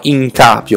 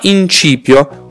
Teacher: non abbiamo in cappio che non esiste ma in cipio con questo trasformazione della a in i